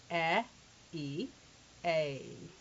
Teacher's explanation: It starts out with a short E sound, as in the E in get, and then the E in need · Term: diphthong sound